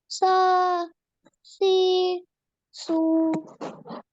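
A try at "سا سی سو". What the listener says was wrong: A bit more long. Sa si su.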